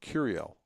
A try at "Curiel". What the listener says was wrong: No, it's Curial. You have to roll the R.